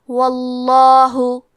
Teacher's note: کلمت واللہ حرف الواو پہ زبر ہے تو لفظ الجلالہ کے لام کا حکم ہے تفخیم، تو ہمیں حرف اللام کو موٹی آواز میں پڑھنا ہے